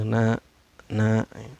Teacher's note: i Hai karena Nun di sini berbaris fathah yang berdiri ya Ini cara bacanya dipanjangkan dua harakat atau diayun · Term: mata asli atau matobi